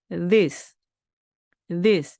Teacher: I는 그대로 이 소리가 나고 그리고 끝에 오는 s는요. 쌍시오처럼 강한 게 아닙니다. 그냥 스 발음하시면 됩니다. 그래서 이것 이것은 무엇입니다 할 때는 this, this 이렇게 되는 거죠.